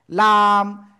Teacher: জিহ্বার আগার কিনারা উপরে মাড়ির দাঁতের গোড়ার সাথে লাগে উচ্চারণ করতে হয় লাম